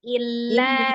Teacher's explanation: Lam itu sifatnya tawasud, tengah-tengah, tidak terlalu ditekan tapi juga jangan terlalu dilepas. Nah, kalau tadi terlalu ditekan ya seolah-olah lamnya sedah, tapi lamnya tawasud.